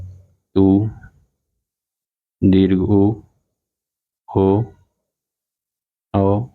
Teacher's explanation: तो इसमें जो होंठ उच्चारण के समय लगभग गोल हो जाते हैं, होंठ गोल स्थिति में होते हैं। इन वर्णों का जब हम उच्चारण करते हैं, इन स्वरों का जब हम उच्चारण करते हैं, तो जो हमारे होंठ होते हैं वह गोलाकार स्थिति में होते हैं। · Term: वृतमुखी